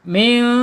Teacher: Dibaca samar dan ditahan dulu dua harakat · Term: ikhfa hakiki